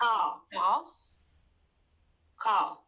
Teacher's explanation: Okay, you pronounced the R at the end. Don't pronounce it in the British accent.